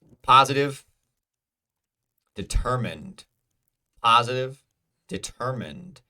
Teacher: Ter is the second syllable. It is stressed.